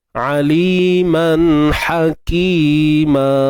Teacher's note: Ha biasa, ha pedas. Kena sempitkan tengah kerongkong kita.